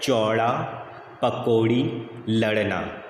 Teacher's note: और ड़ के उच्चारण में देखिए कि आपका जीभ फोल्ड हो रहा है